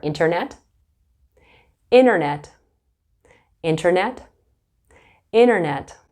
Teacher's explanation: Canadians and Americans will say internet and they won't pronounce the T